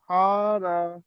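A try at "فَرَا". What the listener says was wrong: ফা টান দিচ্ছেন কেন? ফা টান দিচ্ছেন কেন? ফা জবর ফা, র আলিফ জবর র, এটা টান হবে কারণ এটা আলিফ মাদ্দা।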